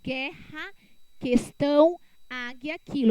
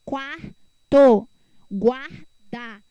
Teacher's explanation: Ele será dígrafo quando o GU e o QU, né, no caso do U, não tiver som, ó, guerra, questão, águia, quilo. Então, o U, ele não tem som, tá?